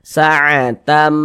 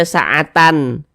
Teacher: Jadi bunyi tanwin ini masuk ke huruf mim atau melebur menjadi huruf mim. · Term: idgham bighunah, idgham bi gunnah